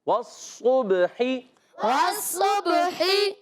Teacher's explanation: और सौद को बा से मिलाएंगे। बा उर्फ़ कलकला में से, बा साकिन है, कलकला होगा, आवाज़ लौट कर आए। कलकला के माना है हरकत या जुम्बिश होना।